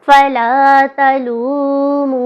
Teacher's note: فا کو لمبا نہیں کریں گے، الف مدہ ہے، اس پہ لام کو لمبا کریں گے ، پھر تا کو سادہ پڑھیں گے، پھر واو مدہ ہے،